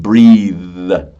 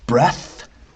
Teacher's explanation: there are two th sounds. One with vocal cords and the other one without